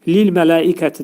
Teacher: ləm hərfinin məxrəcini yumşaq şəkildə yəni incə şəkildə deyirik